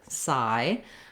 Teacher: And we just want to make sure we have that length of the I. So there is a little secondary stress on the sigh syllable because we need a little time and a clear vowel